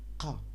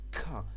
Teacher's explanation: kaf, thousands years ago, was pronounced like qa in Quran, qa, but today it is pronounced like ka